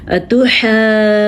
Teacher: ہم نے دو مدوں کے ساتھ ساتھ نون کا غنہ بھی اٹھانا ہے